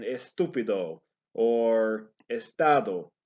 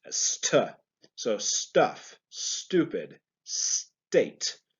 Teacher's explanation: in particular for Spanish speakers, it is important that we do not put an E in front of the ST